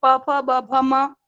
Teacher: एक ही जगह से ओष्ठ से बोले जा रहे